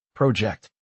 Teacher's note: The word project has stress on the first syllable, project. So the full phrase rhythm is dieta to dieta.